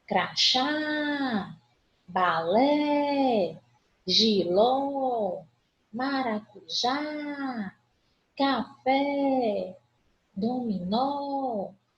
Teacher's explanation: A última sílaba tônica. Portanto, todas elas são oxítonas.